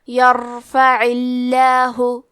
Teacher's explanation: عین کی ادائیگی حلق کے درمیان والے حصے سے ہے، کیونکہ اس کے نیچے زیر ہے تو یہاں بھی لفظ الجلالہ کے لام کا حکم ہے ترقیق، تو ہم حرف اللام کو پتلی آواز میں پڑھیں گے، یرفع اللہ۔ · اس کے پہلے والے حرف پہ یا پہ زبر ہے تو ہم حرف الراء کو موٹی آواز میں پڑھیں گے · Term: حرف العین, تفخیم